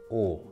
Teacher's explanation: from the vowel uh put your lips forward a little bit to form a circle and you have the sound oh like this that's o okay and you push your lips even